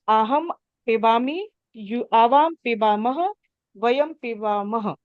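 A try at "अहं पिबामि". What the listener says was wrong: Yes.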